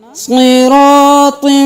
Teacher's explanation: صاد بھی موٹا، را بھی موٹا، طا بھی موٹا